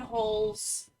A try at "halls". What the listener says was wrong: sounds like you're saying more holes. More and more holes.